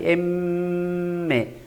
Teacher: sonido nasal cuando al pronunciar el sonido gran parte el aire pulmonar Sale por la nariz